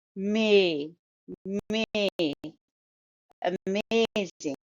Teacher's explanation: the stress is on the second syllable as shown by Arrow amazing